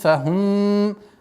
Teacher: здесь у нас отсутствует назализация в размере двух огласовок